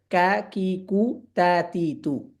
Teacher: এবং তা হারাকাত অবস্থায় স্পষ্ট আওয়াজে উচ্চারিত হবে কারা কাফতা অর্থাৎ কাফতা হারাকাত অবস্থায় কা কি কু তাতি ইতু বাতাস বের হবে না